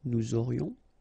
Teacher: Nous aurions, final S not pronounced, and then you've got this liaison, nous aurions.